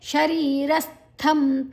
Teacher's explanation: ಸ ಮತ್ತೆ ಥ ಮಹಾಪ್ರಾಣ ಥ ಸೇರಿಕೊಂಡಿದೆ